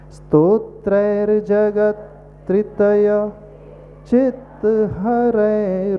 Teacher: जगत यानी त आधा ही आया हमारे मुख से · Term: हलंत